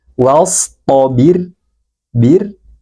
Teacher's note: huruf ro ini kita baca tipis